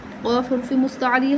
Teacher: قاف حرف مستعلیہ ہے، پر پڑھیں گے